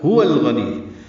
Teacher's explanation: واو کو ہونٹوں کی نہ تمام گلائی سے ادا کرتے ہوئے لام سے ملائیں گے، اظہار قمری ہوگا.